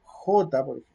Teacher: j que es más atrás en el velo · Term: la velar